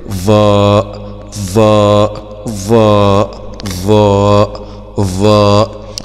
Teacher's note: مخرج الظاء من طرف اللسان مع أطراف الثنايا العليا